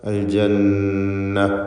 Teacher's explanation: ഈ പദത്തിൽ നൂൻ മുഷദ്ദദ വന്നിട്ടുണ്ട്. ഷദ്ദുള്ള നൂനിനെ മണിച്ചുകൊണ്ട് ഉച്ചരിക്കുക.